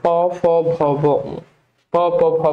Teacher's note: এগুলো একদম দেখ ঠোট থেকে উচ্চারণ হয়। এজন্য এগুলো বলে অষ্টধ্বনি। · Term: ওষ্ঠ ধ্বনি